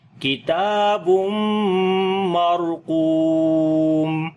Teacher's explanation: اوپر جزم ہے، اس سے پہلے زبر ہے، اس وجہ سے قاف کو موٹا پڑھیں گے حروف استعلاء کی وجہ سے ، اور لمبا بھی کریں گے، واو مدہ ہے تو پڑھیں